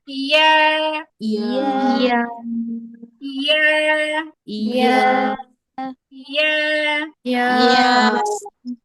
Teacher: এটা কিন্তু আপু খেয়াল করবেন পুরোপুরি মাখরাজের সাথে মেলে না, মানে হচ্ছে জিহ্বার মাঝখানে কিন্তু উপরে তালু টাচ করে না, কিন্তু এটা হচ্ছে জিহ্বার মানে ইয়াটা উচ্চারণ করার সময় জিহ্বার মাঝখানের দিকে হালকা প্রেসার পড়ে